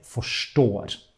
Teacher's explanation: In Norwegian, when we write this RS, in most Norwegian dialects, we say sh instead.